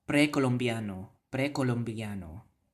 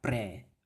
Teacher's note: in Cebuano you have to roll that R